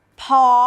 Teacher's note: พ่อมีรูปวรรณยุกต์เอกมีเสียงวรรณยุกต์โท · พ้อมีรูปวรรณยุกต์โทมีเสียงวรรณยุกต์ตรี